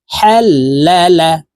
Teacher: হা হরফ হলুকের মধ্যখান থেকে উচ্চারণ করব কারণ হার মাখরাজ হলকের মধ্যখান থেকে হবে হাল্লা বা র পেশ